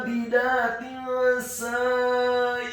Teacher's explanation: huruf ain yang ditekankan keluar dari tenggorokan bagian tengah fathah 2 harokat karena harokatnya tegak. Huruf ba-nya dibaca tipis kasrah 1 harokat.